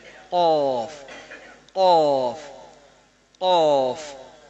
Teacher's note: یہ قوف موٹا ہو کے آواز اوپر کو اٹھ کے حلق کے واپس جا رہی ہے ایسے. قوف قوف, آواز بیک کو جا رہی ہے.